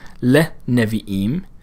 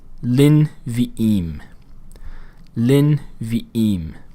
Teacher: And there what we're seeing happen is the Shiva then closes off the syllable because it's following that short hidik vowel